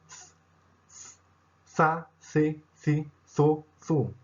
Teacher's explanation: Sem o dagesh, o Tav tinha esse som também, com a língua entre os dentes, só que esse som não fazia as cordas vocais vibrarem. É um som mais ou menos como o do TH no inglês também, e seria algo como Tha, Thi, Thi, Tho, Thu.